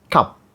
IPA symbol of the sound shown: ʌ